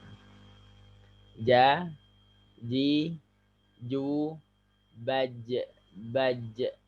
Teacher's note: Tidak perlu ada nafas yang keluar.